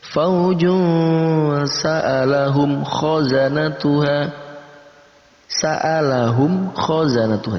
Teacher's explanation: Antara mim dibaca dengan jelas, kha pun kita baca dengan jelas. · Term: idhar syafawi